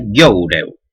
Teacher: el asturiano occidental conserva una serie de diptongos descendientes